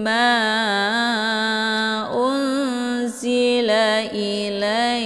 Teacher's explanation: Ma dibaca panjang boleh 4 atau 5 kali ketukan. Ini dinamakan dengan mad jaiz munfasil karena ada mad tabi'i bertemu dengan hamzah di lain kalimat.